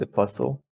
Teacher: you see in uk also apostle there is no t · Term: silent t